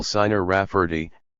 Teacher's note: that the rafes were Italians he addressed the Elder raferty Gravely pronouncing the name with the accent on the second syllable